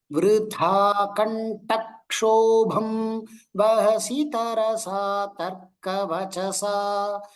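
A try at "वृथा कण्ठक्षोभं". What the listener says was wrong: Two Mahapranas could be clearer. Vritha and Kantha, that tha.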